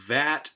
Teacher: followed by the low front unrounded vowel a